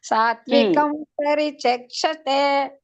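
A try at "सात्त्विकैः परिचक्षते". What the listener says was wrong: ಹಿ ಹಚ್ಚಬೇಕು ಮಾತಾಜಿ ಅದಕ್ಕೆ ಹ ವಿಸರ್ಗದ ಒಂದು ಉಚ್ಚಾರಣೆ ಹ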